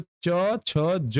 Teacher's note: ये तालव्य की सहायता से बोले जाते हैं ठीक है तालू की सहायता से बोले जाते हैं